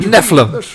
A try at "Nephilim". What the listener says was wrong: There's another syllable in there. Nephilim.